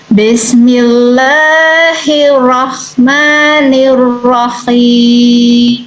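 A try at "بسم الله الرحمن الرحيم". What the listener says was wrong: Tasdidnya kurang, hiya rahman. Tasdid, hiya rahman. Ya, hiya rahman.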